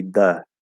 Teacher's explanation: Dental D variation, which is where you lay the tongue more flat and you say the.